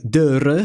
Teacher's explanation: The letter R is trilled as in the Spanish